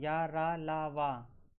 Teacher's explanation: या, रा, ला, वा को अंतःस्थ व्यंजन कहते हैं क्योंकि इनके उच्चारण में वायु का अवरोध कम होता है।